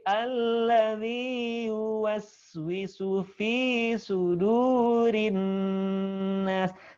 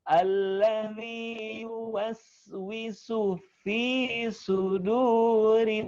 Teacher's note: Jadi tidak kepanjangan pada kata zi, kemudian fi, kemudian sudu, jangan kepanjangan, cukup diayun.